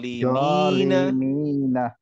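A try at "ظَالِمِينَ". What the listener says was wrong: জ না, জ জ দয়ের মতো কিন্তু একটু মুখটা গোল করে, জলিমিনা।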